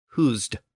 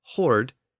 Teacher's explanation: We still have it in modern English as hoard, H-O-A-R-D, as in to hoard food. So between Gothic husd and Old English hoard, you can hear that shift to the R sound that never occurred within Gothic.